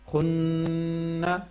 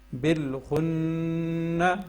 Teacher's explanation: اب یہ دیکھیں نون کے اوپر شد ہے اور یہاں پہ ہم نے غنہ کرنا ہے، ٹھیک ہے، ناک میں آواز لے کے جانی ہے